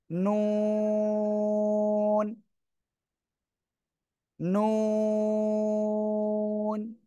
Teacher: জিহ্বার আগা তার বরাবর উপরে তালুর সাথে লাগান লাগিয়ে উচ্চারণ করতে হবে কোন দাঁতের সাথে যেন না লাগে